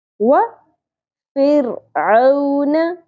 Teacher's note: وَفِرْعَوْنَ فر را باریک ہوگا